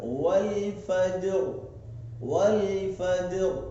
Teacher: ராவை வல்லினமாக மோட்டாவாக படிக்க வேண்டும்